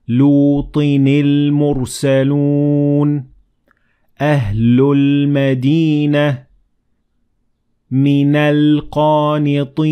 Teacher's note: Notice how I connected the last letter of these words to lam directly from the following word